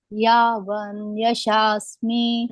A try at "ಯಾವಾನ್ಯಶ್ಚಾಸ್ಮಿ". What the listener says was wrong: ಅಲ್ಲಿ ಗ್ಯಾಪ್ ಬಿಡಂಗಿಲ್ಲ ಮಾತಾಜಿ. ಯಾವಾನ್ ವ ಇಲ್ಲ, ಅಲ್ಲಿ ವಾ ಇದೆ. ಯಾವಾನ್ಯಶ್ಚಾಸ್ಮಿ, ನಕ್ಕೆ ಯವತ್ ಬಂದಾಗ ಹೇಳಿ. ಯಾವಾನ್ಯಶ್ಚಾಸ್ಮಿ ತತ್ವತಃ.